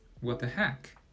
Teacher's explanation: The tone in heck is actually a perfect example of the fourth tone in Chinese.